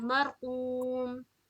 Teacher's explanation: और रा को पुर पढ़ेंगे मरकूम, क्योंकि रा जो जज्म है उससे पहले रा साकिना से पहले आई है जबर, तो इसे पुर पढ़ेंगे मरकूम।